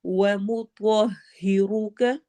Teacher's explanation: تو کو ہیوی پڑھنا ہے، موٹا پڑھنا ہے، اور را کو بھی موٹا پڑھنا ہے